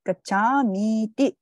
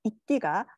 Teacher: 가차미, 가차시, 가차띠 이렇게 해가지고 이로 끝나는데 여기에 이띠라고 하는 불변화사가 붙게 되면은 이가 만나기 때문에 결국 이 장모음으로 변하는 경우가 생성이 됩니다. 그렇기 때문에 가차미띠 요거를 보면은 자연스럽게 가차미에다가 이띠가 합쳐져서 이렇게 장모음이 된 것이구나라는 것을 알 수가 있는 것이죠.